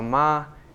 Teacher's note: if you say with just a straight tone so ma it actually would mean mother